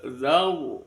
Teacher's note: huruf ro sebelumnya ada fathah itu dibaca tebal zar. Kemudian di tambah dengan tasjidnya roya kemudian dibaca ada ro berakat fatkah dibaca tafkhim.